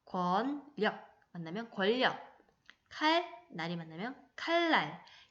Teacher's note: 여기서 주목할 점은 니은이 리을의 영향을 받아서 리을이 된다는 거예요. 니은, 리을이 만나면 리을, 리을이 되고 리을, 니은이 만나면 리을, 리을이 됩니다. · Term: 유음화